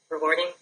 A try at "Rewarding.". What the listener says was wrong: Are you asking me a question or making a statement? Okay, so make a statement. How should it sound? Technically, it is rewarding, but how should it sound out of your mouth?